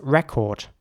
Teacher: The lips are getting quite round for record in the British English version, whereas in the American English version, it's more like record.